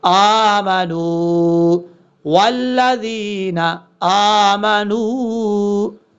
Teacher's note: حمزہ کے اوپر کھڑا زبر ہے، ایک الف کی مقدار اس کو لمبا کر کے پڑھا جائے گا ، اور نون کے بعد واؤ ہے، نون کو واؤ سے